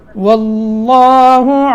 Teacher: واللہ لام موٹا کرنا پیچھے زبر ہے